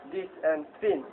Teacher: sounds produced with the tip of the tongue between the upper and lower teeth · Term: interdentals